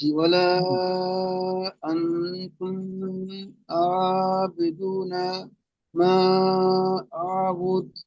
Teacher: নুন সাকিনের পরে তা এসেছে তাই নুন সাকিনকে একালি পরিমাণ গুণনা করে পড়তে হবে।